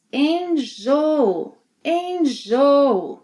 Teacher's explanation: The second O is often reduced to U.